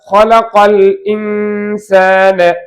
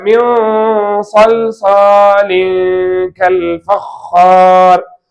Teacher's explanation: சுக்கூன் பெற்ற நூனுக்கு பிறகு இஸ்திலாவுடைய எழுத்து வந்திருப்பதால் இந்த நூனுடைய குன்னாவை தஃஹீம் செய்யணும்.